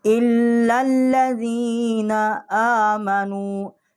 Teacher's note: یہ جو حمزہ ہے، الف جو ہے اس کے اوپر جو کھڑی زبر ہے، ایک الف جتنا ہم اس کو کھینچیں گے۔